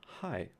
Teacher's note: the H in high, and this is a glottal fricative